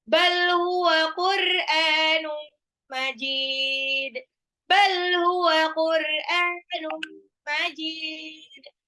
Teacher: Tanwin ketemu mim, idgham bi gunnah.